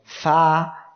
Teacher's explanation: এই যে ফা অক্ষরটি উচ্চারণের সময় দেখেন কোনো দিকে কোনো জড়তা নাই, এক কথায় কোনো জায়গায় সেটা বাধা যাচ্ছে না, সহজে উচ্চারিত হচ্ছে আর দ্রুত। ফা অক্ষরটি উচ্চারণের সময় নিচের ঠোঁটের পেট উপরের দুই দাঁতের আগার সঙ্গে লাগিয়ে উচ্চারণের সময় একদম দ্রুত উচ্চারিত হবে আর সহজে উচ্চারিত হয়ে যাবে। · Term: ইযলাক